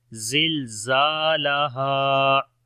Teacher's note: زا کو لمبا کریں گے، الف مدہ ہے، اور ہا کو لمبا کریں گے، یہاں پر بھی الف مدہ ہے، تو پڑھیں گے زلزالہا۔